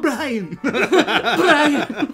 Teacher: I really I trilled the R for some reason.